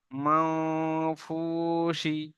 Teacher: করে এখানে মান আওয়াজ আসবে না এখানে গুন্নার আওয়াজ আনতে হবে ইকফার গুন্নাহ যেমন নাকে তুলে এককালি পরিমাণ গুন্না করে পড়তে হয়